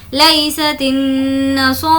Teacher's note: صاد اور را دونوں کو کھینچیں گے کیونکہ کھڑا زبر ہے